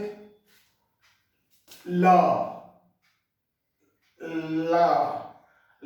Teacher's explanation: जीभ को higher पैलेट ऊपर में सटाते हैं, ला, ला, तो ये होता है आपका एलोवेरल साउंड बोलते हैं।